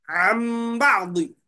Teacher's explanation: अन बादी लिखे हुआ है, मगर पढ़ेंगे अम बादी। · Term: इकलाब